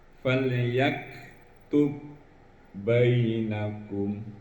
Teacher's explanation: Umpamanya huruf ba, huruf ba mati bertemu dengan huruf ba berharokat. Cara membacanya bukan dikolok-kolakan, tapi seolah-olah ditasdidkan.